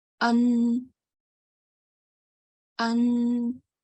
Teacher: I have to make a stretched nasal sound